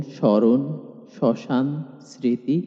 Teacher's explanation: ম ফলাও সাধারণত ব ফলার মতোই কিছু ক্ষেত্রে উচ্চারিত হয় না, কিছু ক্ষেত্রে উচ্চারিত হয় এবং কিছু ক্ষেত্রে ম ফলা যুক্ত বর্ণটি দ্বিত্ব হয়। প্রথমত, শব্দের শুরুতে ম ফলা উচ্চারিত হয় না, তবে সামান্য নাসিক্য প্রভাব থেকে যায়